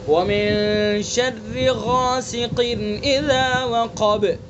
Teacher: غین کو پر کریں گے چونکہ حروف مستعلیہ میں سے اور غین کے ساتھ الف کو بھی پر پڑھیں گے چونکہ الف سے پہلے پر حرف ہے